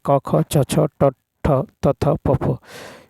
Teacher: जिन वर्णों के उच्चारण में आपस में स्वर तंत्रियाँ झंकृत नहीं होती वे अघोष वर्ण कहलाते हैं। प्रत्येक वर्ग का पहला और दूसरा व्यंजन वर्ण अघोष ध्वनि कहलाता है, जैसे क ख छ छ ट ठ त थ प फ।